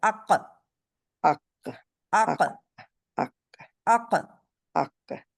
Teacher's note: جب قاف کہیں گے تو پیچھے اس کے اوپر زبان کی جڑ لگائیں گے تو یہ جو ہے آپ کا بند کر دیتا ہے حلق